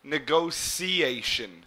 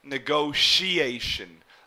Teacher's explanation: this T here would almost be pronounced like an S or a C